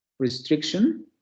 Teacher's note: la consonante nasal que tenemos al final está funcionando como núcleo silábico de la otra sílaba